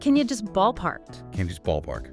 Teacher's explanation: The word you is very prone to reduction, especially when it's unstressed or at the start of a question. It can become ya or just a really weak yi sound.